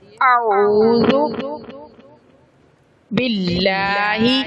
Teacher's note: لفظ اللہ سے پہلے اگر زیر آ جائے تو پھر لفظ اللہ کو باریک کر کے پڑھنا ہے